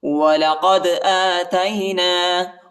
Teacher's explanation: قاف کو دال کے ساتھ ملائیں گے اور دال کو جھٹکے کے ساتھ پڑھیں گے، قلقلہ کریں گے